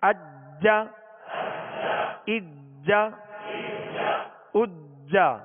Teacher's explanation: اس پر تشدید ہے لہذا خوب جماؤں کے ساتھ ادا کریں گے. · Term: حروف قلقلہ